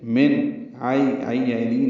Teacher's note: بعد عین اور حمزہ آنے کی وجہ سے، من عین ہے، عین وسط حلق سے ادا کریں گے اور نرمی سے پڑھیں گے